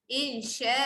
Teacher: Bila anda baca, anda berhenti, tolong jatuhkan hukum mat iwat dekat situ. Jangan baca insya', jangan matikan hamzah tu. Insya'a. Okey, berikan a tu hak bunyi 2 harakat.